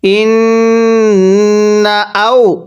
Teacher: নুনে যদি তাজদিদ হয় গুন্নাহ করে পড়তে হয়